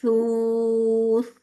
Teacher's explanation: دیکھیے جب سا کو فتح دمہ کے ساتھ بولے تو بھی کوئی وسلنگ نہیں ہے، اور اینڈ میں بھی نہیں